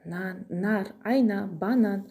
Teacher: Н дауыссыз дыбыс, ол тіл мен тіс арасынан кедергіге ұшырап шығып тұр. Сол сияқты айна сөзінде екінші буында, банан сөзінің ортасында, соңында Н дыбысы келіп тұр.